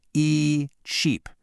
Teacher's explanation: But for sheep, you've got to smile a little. Stretch your lips out. Make the sound longer.